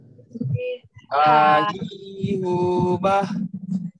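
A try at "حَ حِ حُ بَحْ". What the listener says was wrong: Belum, itu masih terlalu halus.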